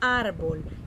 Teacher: la sílaba tónica es ar, es una palabra grave